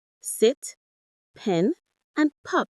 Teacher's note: Sit, pen, and pop all have short, steady, pure vowel sounds. They are monofongs.